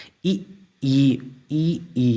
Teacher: मुंह के जो ऊपर छत है यानी कि उसके लास्ट कोने पे आपके जीभ लग के इन चीजों का उच्चारण होगा